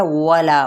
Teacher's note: अब यहाँ पे क्या है, वला, वाव होंठों की ना तमाम गुलाई के साथ, ठीक है, होंठ गोल करने हैं प्रॉपर तरीके से